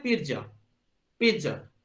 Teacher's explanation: बहुत ही मतलब एक फ्रैक्शन ऑफ टाइम के लिए पिज्जा, जो आप जब पिज्जा बोलते हैं ना, तो आप ट के लिए क्या करते हैं कि आपका जो अपर टिप जो है, टंग का जो टिप होता है, tip of the tongue will touch the upper पैलेट, मतलब जो आपके मुंह के पास का जो पैलेट है उससे वो टच करता है। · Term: ट का साउंड